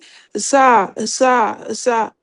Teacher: زبان کو نیچے جو آپ کی زبان کی نوک ہے نیچے کے 2 دانتوں کی جڑوں میں لگیں گے